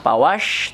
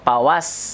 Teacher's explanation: Hamas itu desir, napasnya dikeluarkan, tidak ditelan.